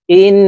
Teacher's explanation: হরকতের বামে নুনের উপরে তাসদীদ আছে, তো এই হামজা তাসদীদওয়ালা নুনের সাথে নাকের বাসি থেকে গুন্নাহ করে পড়ব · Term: ওয়াজিব গুন্নাহ